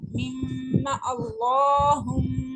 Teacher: میم شدت پہ ہم غنہ کر رہے ہیں اللہ کے لام کو موٹا پڑھ رہے ہیں